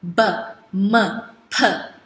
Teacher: we use both upper lip and lower lip to make the sound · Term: bilabial